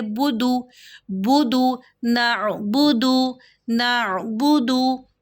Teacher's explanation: نا، درمیانے حلق میں آواز لے کر جائیں، باقی اوپر پیش، دال کے اوپر پیش کو ہونٹوں کی مکمل گولائی سے ادا کریں گے